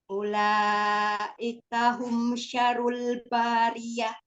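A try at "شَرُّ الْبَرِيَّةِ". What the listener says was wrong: Tasdid. Tasdid di huruf ro. Syarrul. Syarrul bariyah. bari, tidak bari. Bariyah.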